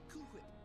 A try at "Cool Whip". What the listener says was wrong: You're saying it weird. Why are you putting so much emphasis on the H? Say whip. Whip. Now say Cool Whip.